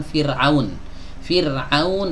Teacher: ada keadaan dimana huruf ro itu dibaca tipis